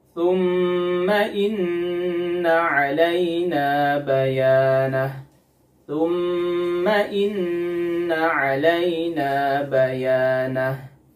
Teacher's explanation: Di sini ada mim yang bertasydid dan ada nun yang bertasydid, yaitu pada kata thumma dan pada kata inna. Karena mim dan nun bertasydid, maka gunnahnya harus dipanjangkan 2-3 harokat. Disebut dengan gunnah akmal ma takun.